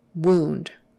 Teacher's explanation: this particular word, O-U, is pronounced oo, not ow, oo.